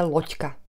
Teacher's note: Znelé d nahradíme neznelým ť.